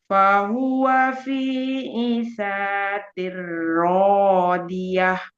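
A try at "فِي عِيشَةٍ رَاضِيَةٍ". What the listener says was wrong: Panjang. Fi 'isyatir radiyah.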